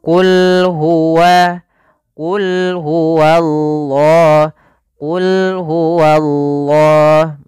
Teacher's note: Allah di sini kita namakan lam tafkhim, lam yang dibaca dengan tebal · Misalnya qul huwallahu, wanya tebal. Harusnya bedakan wa tipis dulu baru Allahnya tebal. Qul huwallah, qul huwallah, baru tebal Allahnya. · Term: lam tafhim